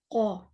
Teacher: قو پیچھے جو سافٹ حصہ ہے ہمارے تالو کا, سافٹ حصہ وہاں لگنا چاہیے. قو پیچھے زبان کو لے جائیں, ٹھیک ہے نا.